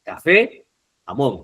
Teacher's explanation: las agudas, la sílaba tónica es la última.